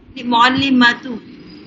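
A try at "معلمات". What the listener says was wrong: एक तो आप फिर इसको भी मतू पढ़ रही हैं, ये मतू नहीं है, ये मातू है।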